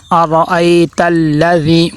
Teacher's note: حمزہ کے اوپر زبر ہے تو حمزہ کو عین نہیں بنانا، اَرَأَيْتَ الَّذِي، تو حمزہ کو عین نہیں بنانا، حمزہ کی آواز را کے اوپر دیکھیں زبر ہے، اور جس را کے اوپر زبر یا پیش آ جائے اس کو موٹا کر کے پر کر کے پڑھتے ہیں۔